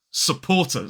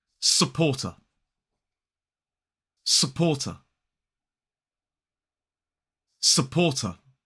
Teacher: the letters ER at the end of a word in a modern British RP accent can be replaced with a schwa if they're not followed by a vowel sound. So supporter, not supporter.